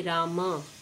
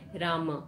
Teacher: करने लगे हैं राम यानी मुख बंद हो रहा है अर्थात् जो अंत में आने वाला है स्वर है उसका हम उच्चारण में अब प्रयोग नहीं कर रहे हैं